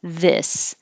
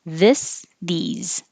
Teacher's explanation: So remember, this, your tongue is a little lower. This. These is higher, like eat.